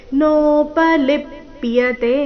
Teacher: ಲಿ ಮೇಲೆ ಆಘಾತ ಕೊನೆಯತೆ ದೀರ್ಘ